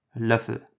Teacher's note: basically the short version or closed version of the Ö sound